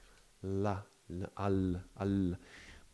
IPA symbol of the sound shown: l